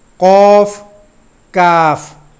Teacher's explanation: ہے جی، یہ دونوں ان دونوں کی آواز ملتی ہے لیکن نقطے والا قوف موٹا کر کے ادا کیا جائے گا، دوسرا کاف باریک کر کے ادا کیا جائے گا